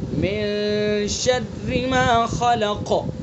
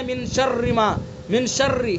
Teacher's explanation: تو را کو باریک پڑھیں گے چونکہ را کے نیچے زیر ہے اور اس کے اندر تکرار نہیں کریں گے. بہت سے کیا پڑھتے ہیں من شر ما، من شر، اس طرح نہیں پڑھیں گے، نرمی کے ساتھ چونکہ باریک ہوگی.